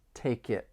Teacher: can link the final consonant sound in take with the beginning vowel sound in it